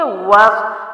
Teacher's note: والصلوات، واو جو ہے الف اور لام جو ہے اضافی ہے کیونکہ صاد کے اوپر وہی تشدید ہے، تو صاد کے لیے وہی رول اپلائی کریں گے کہ واو کے اوپر زبر ہے تو واو کو صاد میں داخل کریں گے، وس، واو زبر صاد، وس، ٹھیک ہے، وس، ہونٹ گول کریں گے اور پھر صاد کے لیے موٹے کریں گے